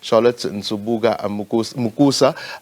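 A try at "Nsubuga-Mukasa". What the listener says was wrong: Mukasa at the end there.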